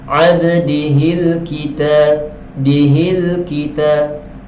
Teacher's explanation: Jadi lam ni dibaca dengan jelas, alif lam qamariyah.